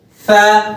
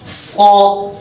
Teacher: सा नरमी से, सीटी के साथ बारीक सा, इसको सीटी सख्ती के साथ मोटा सौ